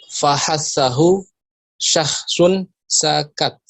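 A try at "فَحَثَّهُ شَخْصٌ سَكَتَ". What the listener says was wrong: Iya, Masya Allah.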